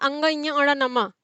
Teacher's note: इनका उच्चारण मुख और नासिका दोनों से ही होता है। मुख और नासिका दोनों से ही उच्चारित होने के कारण इनको अनुनासिक कहा जाता है।